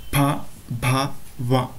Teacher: ತುಟಿಯ ಸಹಾಯದಿಂದ ಈ ಅಕ್ಷರಗಳನ್ನು ಉಚ್ಚಾರಣೆ ಮಾಡ್ತೀವಿ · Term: ಓಷ್ಟ್ಯ ಅಕ್ಷರಗಳು